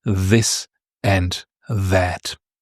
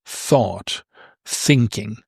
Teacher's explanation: You have th again, but it's a different sound because the delta is voiced